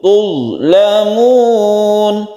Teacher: zo-nya ini jangan dikolkolakan karena bukan huruf kolkola. Tuzlamun, tanpa memantulkan hurufnya ya, karena bukan kolkola.